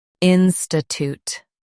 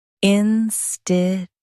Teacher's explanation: In US, stress in and say tute. In UK, stress in and say chute.